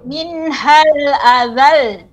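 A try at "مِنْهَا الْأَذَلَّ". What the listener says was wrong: Jadi harus lebih tinggi lagi dia, lebih ditinggikan suaranya.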